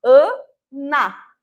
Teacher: o som inicial AN, que sofre a nasalização da consoante N, e o som de A, que no final, que é o som da vogal oral aberta A, ANA.